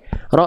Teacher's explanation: enggak boleh banyak getaran tapi bukan berarti hilang getarannya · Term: takrir